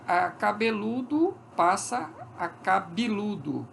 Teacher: Era E e passou a ser I. O I é tão alto quanto o U. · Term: alteamento